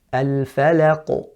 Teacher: So you hear the qalqala there on the qaf, it's very loud, it's very clear. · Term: qalqala kubra